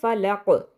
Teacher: بالکل وہی رولز ہیں جو کہ سورہ ناس میں ہم نے پڑھے پہلی آیت میں، لیکن اس میں فرق یہ ہے جو الفلق ہے یہاں پر ہم رکیں گے. ایک تو قاف جو ہے اس کی آخری جو حرف ہے اس کی حرکت کو ہم اڑا دیں گے اور ہم اس پہ عارضی سکون لگا دیں گے